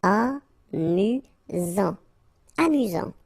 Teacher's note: You get only one S here between the vowels, so it's really this Z sound.